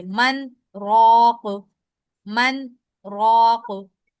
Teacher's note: लेकिन क्योंकि सख्ता वक्फ के हुक्म में होता है तो हम वक्फ के अंदाज में रुकेंगे, गुन्ना नहीं करेंगे।